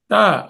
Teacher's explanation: త అనేసరికల్లా దంతాలు దగ్గరకు వస్తున్నాయి